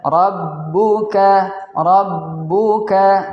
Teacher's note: huruf ba-nya ada tasjidnya, maka ada penekanan. Kita tekan rabbuka, dan ra-nya yaitu berbaris fathah, maka kita baca dengan bacaan yang tebal.